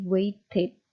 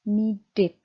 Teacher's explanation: Yang terakhir, ketika ketika imbuhan ed itu menempel pada pada verb yang berakhiran teh atau deh, maka akhiran ed itu akan Anda baca dengan it ya